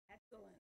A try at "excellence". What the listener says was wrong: Excellence. I'm sorry, one more time.